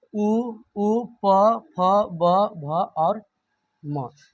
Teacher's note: जब हम इसका उच्चारण करते हैं तो हमारा ओष्ठ दोनों क्या होता है, एक दूसरे से सटता है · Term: ओष्ठ्य वर्ण